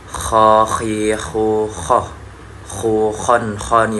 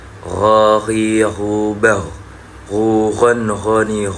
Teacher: tempat keluaran suara itu ada di adnal halaq atau paling atas dari tenggorokan